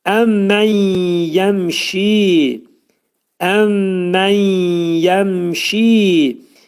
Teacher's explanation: Əmmən yəmşidə idğam mə'al gunnə burunda sıxılır. Nun hərfi yəyə çevrilir.